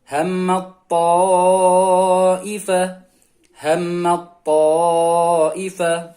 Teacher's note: jadi huruf ta-nya hilang masuk ke huruf ta.